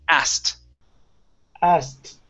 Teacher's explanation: we get to take out the k so instead of saying asked okay we say ass and then · So this word is special. We get to take out the K.